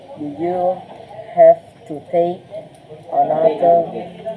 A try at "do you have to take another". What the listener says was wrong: Jangan ditekan kayak orang Jawa jadinya. Another.